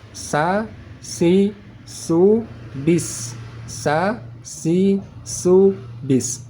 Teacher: cara membaca huruf sin agar tipis, tidak tebal, maka pangkal lidah kita tekan ke bawah supaya tidak naik ke atas. Kalau sudah naik ke atas berubah menjadi huruf sad.